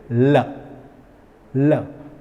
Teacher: जिसमें जीभ को ऊपर जाके आजू बाजू से हवा निकलनी ज़रूरी होती है, तो इसीलिए हम इसे लैटरल शब्द कहते हैं।